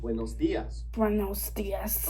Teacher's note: Make sure you say buenos. And notice that dias has an accent on the I, so stress it